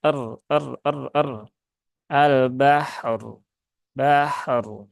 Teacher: tunaikan dulu rakhoah dari ha kemudian setelah itu baru tawasutnya huruf ro